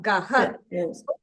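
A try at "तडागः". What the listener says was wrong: You're saying gaha. There is no ha there, no?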